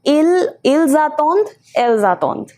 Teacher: ENT doesn't give any separate pronunciation